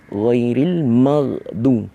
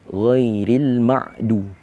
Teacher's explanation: Dia bertukar menjadi ain. Ghin bertukar menjadi ain.